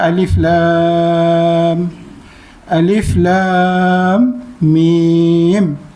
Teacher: Alif tu biasalah alif, sebut alif, lam tu 6 harakat dan mim tu 6 harakat. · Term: mad lazim harfi musaqqal